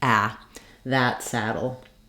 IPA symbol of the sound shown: æ